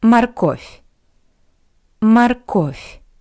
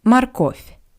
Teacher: I want to remind you that the first O is unstressed. That's why it sounds like морковь.